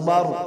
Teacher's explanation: را سے پہلے زبر ہے تو موٹی ہوگی